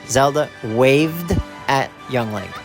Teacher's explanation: the verb wave ends in a V sound and you can sing the V sound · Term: the d ending, D ending